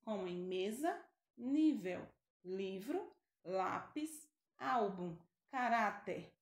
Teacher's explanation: certo exemplos de paroxítonas homem mesa nível livro lápis algum caráter nós pronunciamos a penúltima sílaba com maior intensidade